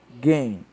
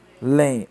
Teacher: sílaba tônica de alguém guém e de além lém ambas são oxítonas